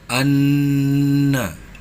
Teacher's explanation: Pada ayat ketiga ini terdapat hukum gunnah musyaddadah pada huruf nun bertasdid dan dibaca mendengung